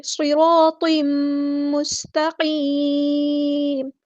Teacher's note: سین کی سیٹی ہم نے واضح کرنی ہے. تا باریک قاف ہمارا ہیوی لیٹر ہے پورا ادا کریں گے.